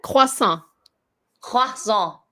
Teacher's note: And you don't say the T, so it's croissant.